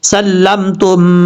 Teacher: میم پیش تم، سلمتم، اب تا کے بعد جو میم ہے، پہلے میم کو چھوڑ دیں گے، تا کو ڈائریکٹ دوسرے میم کے ساتھ کنیکٹ کریں گے جس میم کے اوپر شد ہے ، سلمتم، یہاں پہ ادغام مثلین ہو رہا ہے، ایک الف